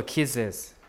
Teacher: And kiss, it ends with a hissing sound, sibilant, right? So you have to insert a vowel, either I or schwa, and then Z, right? So kisses, right?